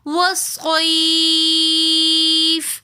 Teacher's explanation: والصیف میں واو کو پڑھتے وقت ہمیں ہونٹوں کو پراپر طور پہ گول کر لینا ہے تاکہ واو کی صحیح طریقے سے ادائیگی آئے۔